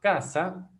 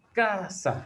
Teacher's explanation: Aquí está la G de grave, porque tiene la mayor fuerza de voz en la penúltima sílaba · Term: palabra grave